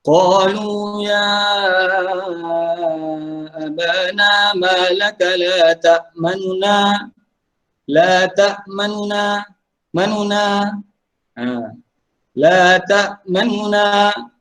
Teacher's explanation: Baik, pertama dibaca dengan ikhtilas ar-raum. Cara bacaannya adalah ikhtilas ni maksudnya dibaca dengan kurang daripada satu harakat.